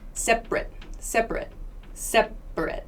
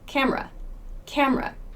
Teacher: speech this a right here becomes a schwa separate separate separate so it's a very quick short sound that's the schwa it's not like any other vowel